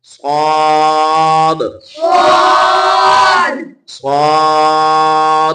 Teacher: اس میں واو نہیں ملانی, سواد نہیں کہنا, اسے سیدھا سیدھا اور لمبا کر کے پڑھنا ہے